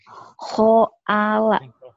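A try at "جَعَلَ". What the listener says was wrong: Kho mana khoala? Ini ja. Oh, Ja'ala.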